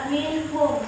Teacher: nun sukun bertemu dengan huruf mim dibaca masuk dengan dengung. Cara baca, mim dibaca menyambung dengan mim, berikutnya disertai dengung. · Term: idgham diguna